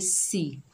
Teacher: सीन के नीचे जेर, बगैर खींचे पढ़ेंगे, सीन को सख्ती और सीटी से पढ़ेंगे